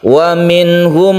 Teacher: waminhum membacanya izhar dan tidak berdengung